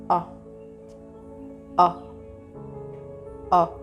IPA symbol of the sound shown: ɔ